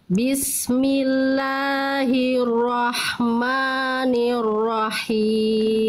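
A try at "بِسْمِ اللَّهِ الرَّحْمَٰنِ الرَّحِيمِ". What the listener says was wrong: Bagus Bunda, lanjut.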